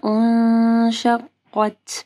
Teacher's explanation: اذا السماء انشقت، یہاں پہ دیکھیں نون ساکن کے بعد جو ہے شین ہے تو یہاں پہ اخفا غنہ ہوگا. پھر قاف کو جو ہے موٹا پڑھنا ہے اور تا کے اوپر ہمز کرنا ہے.